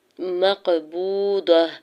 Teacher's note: میم کے زبر کو قاف ساکن کے ساتھ ملاتے ہوئے قاف ساکن پہ قلقلہ کرنا ہے